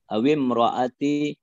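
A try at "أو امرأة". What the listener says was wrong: tanwin Pak awim ra'atin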